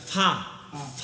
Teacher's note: এর মাখরাজ কি নিচের ঠোঁটের পেট উপরের দাঁতের আগা না ফা ফা একটু ফা ফা শব্দ হইবে ঠিক আছে ফাওয়াইলুল